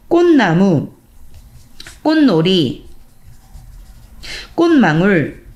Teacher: 꽃나무, 꽃놀이, 꽃망울 음절의 끝소리가 된 다음에 다시 어떤 뒤에 있는 비음의 영향을 받아서 자신도 비음이 되는 비음화